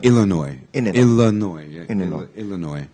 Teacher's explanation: The problem is that the last sound is not pronounced. No. I mean, no S.